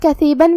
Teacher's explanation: کلمت کثیبن میں یہاں حرف الثا ہے. ثا کی ادائیگی زبان کے سر اور اوپر والے دانتوں کے اندرونی کناروں سے ہے. آخری میں با پہ تنوین زبر ہے.